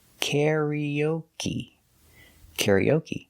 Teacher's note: Karaoke is 4 syllables. We put the stress on the first syllable, karaoke, and the third syllable.